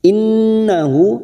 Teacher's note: nun yang bertasdid gunnah musaddadah kita tekan 3 harokat